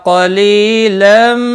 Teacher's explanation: قاف مستعلیہ ہے، پر پڑا جائے گا. لا الا الف مدہ ہے، ایک الف کے برابر کھینچ کر پڑھیں گے.